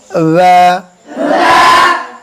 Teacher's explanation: বা বলতে হবে আমাদের দুই ঠোঁটের ভিজা অংশ থেকে